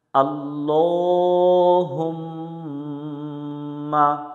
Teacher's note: মিমের উপর তাসদিদ, এই মিমে গুণনা করা ওয়াজিব। যেখানে বাতি চিহ্ন দেখবো ওখানে গুণনা করে নিব।